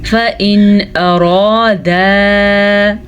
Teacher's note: را کو پر پڑھنا ہے اور الف مدہ کے ساتھ پڑھنا ہے. فَإِنْ اب یہاں پہ نہ تو غنہ کرنا ہے، نہ ملانا ہے، نہ اخفا کرنا ہے کیونکہ نون ساکن کے بعد حروف حلقی میں سے حمزہ آ گیا ہے تو نون ساکن کو ہم ظاہر کر کے بغیر غنّے کے پڑھیں گے.